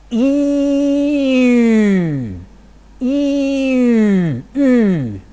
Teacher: I first produce cardinal number 1, E, and then I round my lips. E, E, is cardinal number 9, a rounded front vowel